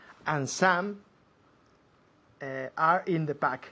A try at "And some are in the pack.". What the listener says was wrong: Y ahora con naturalidad. No como un automóvil. Tal y como habláis en español. Fusionando las palabras.